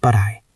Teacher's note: When you speak quickly, the T at the end of but often links to the next word. If the next word is I, it sounds like but I or a soft flap sound.